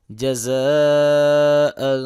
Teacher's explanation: جیم زبر جا، زا زبر الف مد زا، جزا، حمزہ 2 زبر ان، جزاء، زا کو سیٹی کی آواز سے پڑھیں گے، الف کے اوپر بڑی مد ہے، اس کو 3 الف کے برابر لمبا کریں گے، اور اسی طرح حمزہ کے اوپر 2 زبریں ہیں، تنوین ہے، تو تنوین پہ ہم اخفا کریں گے، یعنی کہ غنہ کریں گے